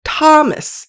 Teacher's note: When male names were multisyllabic, stress tended to fall on the first syllable like in Thomas.